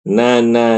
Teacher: na itu jangan tebal, pertama pangkal lidah jangan langsung naik. Terus yang kedua, ketika mulut dibuka, bukanya senyum, jangan no, jangan na, senyum.